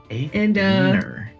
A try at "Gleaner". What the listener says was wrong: G. I couldn't hear the G. I'm sorry.